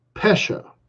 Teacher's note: It's a schwa and then a ah.